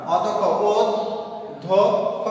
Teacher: প্রথমে যে অ এর পরে যদি জ ফলা থাকে, তাহলে এই অটা কি হবে, ও হয়ে যাবে , তাহলে আমরা কোনভাবে উচ্চারণ করলাম, অধ্যক্ষ, ওদ ধ খ, তাহলে